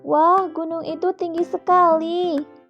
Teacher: cara membaca tanda seru dengan nada suara yang semakin naik